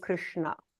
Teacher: we're turning the tongue back retroflex